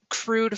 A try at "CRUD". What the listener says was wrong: The E is silent.